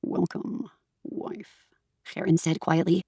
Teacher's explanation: she gives Karen and Augustus a voice that is so low and so very obviously outside of her register that it just comes out as gravel and vocal fry